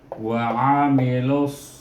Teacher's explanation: Iaitu huruf sad. Maka kita idghamkan syamsi kan huruf lam ini dengan huruf sad.